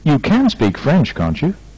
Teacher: can be expressed in the main part of the sentence by high tones on the modal or auxiliary and on the last important stress of the sentence both followed by sharp Falls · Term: questioning tag